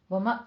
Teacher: वमा वा पे झटका करना है थोड़ा सा, वा को फतह कायमा पूरी 2 काउंट करनी है